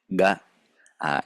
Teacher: it is an implosive stop, which we call because the sound is fully closed, but also the sound goes inward. So if you say ga, you can hear that the sound travels inward towards the lungs.